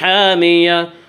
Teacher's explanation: حامیتن آگے آیت ہے، وقف کریں گے گولتا پر، جب وقف کریں گے تو گولتا وقفے کی صورت میں ہائے ساکنہ بن جاتی ہے